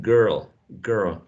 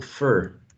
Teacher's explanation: basically in the same position of the schwa right it's an also mid-central position it's longer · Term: crazy schwa